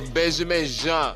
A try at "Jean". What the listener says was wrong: We Haitians here. It's Jean. It's pronounced Jean, not Gene.